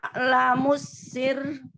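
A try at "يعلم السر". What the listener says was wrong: Jadi kan kalau baca ya lamusir itu kan harusnya gitu ya. sekarang karena dia wakaf dia jadi tipis dan r-nya jangan terlalu pendek. Jadi ya lamusir tahan sir. Jadi bukan soal tawasudnya tetapi dia tasydid. tasydidnya bikin dia jadi lebih lama lagi daripada sekedar tawasudnya.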